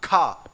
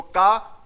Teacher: महाप्राण में हवा निकलती है, अल्प प्राण में हवा नहीं निकलती है।